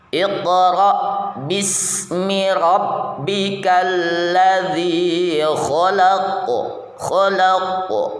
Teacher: huruf q ketika sukun hendaknya dipantulkan ya atau Qalqalah nah Q Q itu punya sifat Qalqalah ya